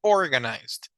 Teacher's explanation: donde va la fuerza de voz, es organized, como que si hubiera una tilde en la O. Entonces sería My sister Arlely is absolutely organized.